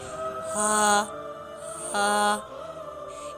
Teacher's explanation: یہ حلق کے آخری حصے سے ادا ہوتا ہے جو سینے کی طرف ہے